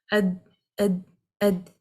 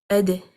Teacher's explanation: For the letter dal, again, we need to apply qalqala because when the tongue is touching its makhaarij, the roots of the upper front incisors, it's blocking the sound to come out